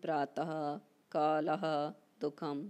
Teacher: विसर्ग का भेद जिह्वामूल्य, जब विसर्ग के बाद का ख वर्ण रहते हैं तब अर्ध विसर्ग उच्चारण होता है।